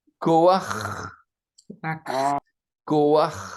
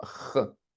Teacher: On appelle ça un patak furtif, c'est-à-dire que vous prononcez ko, vous prononcez pas d'abord la consonne, vous prononcez d'abord la voyelle. De ko a, et puis seulement ch.